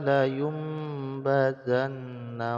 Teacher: Nun sukun bertemu dengan ba maka Nun sukunnya dibalikkan menjadi menjadi mim yang sukun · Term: iqlab